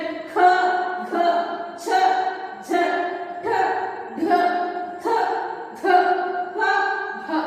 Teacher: ಹೆಚ್ಚು ಉಸಿರು ಬೇಕಾಯ್ತಲ್ವಾ, ಹಾಗಾಗಿ ಇವುಗಳನ್ನ ನಾವು ಮಹಾಪ್ರಾಣಾಕ್ಷರಗಳು ಅಂತ ಹೇಳಿ ಕರಿತೀವಿ